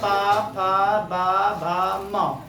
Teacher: पूरे प वर्ग का उच्चारण जो होता है वो ओष्ठ से होता है